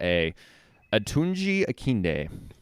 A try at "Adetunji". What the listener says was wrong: There's a D in there. Adetunji. It's Adetunji.